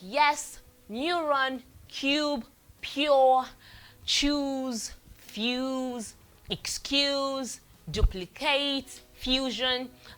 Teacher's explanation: This people have termed it as a semi-vowel, semi-consonant because most times it's used alongside vowels and it sounds like a vowel sound. So this is a glide created by bringing the middle of the tongue very close to the roof of the mouth, then releasing it. Letters that usually represent this sound is, we have the Y and sometimes other vowels found in words like yes, neuron, cube, pure, choose, fuse, excuse, duplicate, fusion.